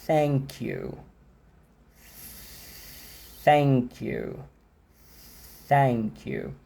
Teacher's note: enquanto eu estou falando o som do TH, além da minha garganta não vibrar, o único som que eu tenho de fato é o som do sopro, é o ar passando, é a corrente, é o fluxo. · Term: voiceless